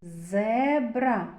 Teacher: Перший звук з твердий приголосний.